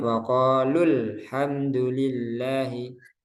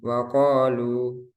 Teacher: Tidak panjang ketika dibaca wasol atau bersambung. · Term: mat bertemu hamzah wasal